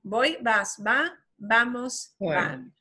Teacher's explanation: the V will not sound like a V with your teeth on your tongue. It will sound like a B, an English B.